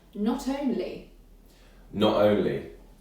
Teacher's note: It's not such a strong glottal stop.